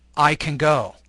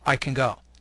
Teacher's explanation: The word can is unstressed with a schwa sound.